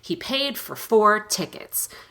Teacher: four is reduced to fur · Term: rushed version of four